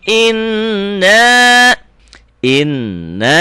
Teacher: laa yumminun [Tertawa] ingat kalau Nun dan mim ada tanda gininya dibacanya dobel dengung ke hidung dan ditahan itulah gunah